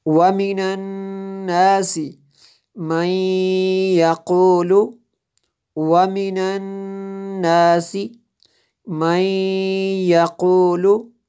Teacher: دیکھیں یہاں پہ نون مشدد ہے اس لیے غنہ ہوا، یہاں پہ نون ساکن کے بعد یا حروف یرملون میں سے یہاں پہ ادغام ہوا۔